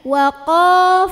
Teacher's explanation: waqo pangkal lidah naik, jangan sampai waqo nyantai, pangkal lidahnya naik tebal.